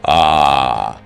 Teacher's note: Make a slight catch in your throat like the beginning of the word apple. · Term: silent stop